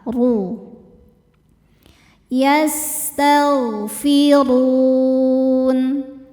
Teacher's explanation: Ro dibaca secara tafkhim karena barisnya dommah. Cara bacanya tebal. · ra dibaca secara tafkhim karena barisnya dhammah, cara bacanya tebal, ru. Yastaghfirun, saat berhenti run hukumnya mad arid li sukun, karena mad tabi'i bertemu dengan huruf yang disukunkan karena waqaf.